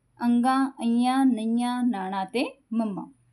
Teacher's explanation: दे उच्चारण समय मुंह पोल कोमल तालु दे नाल हो करके हवा नक दे रास्ते बाहर निकलदी है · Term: नासकी व्यंजन